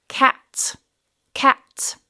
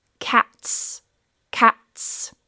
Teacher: if you really pay attention to the length and that s sound at the end, then you will hear the plural form.